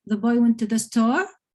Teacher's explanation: If it's a question, the boy went to the store, so you have a rising tone at the end. Whereas if you want it just as a sentence, as a fact, the boy went to the store.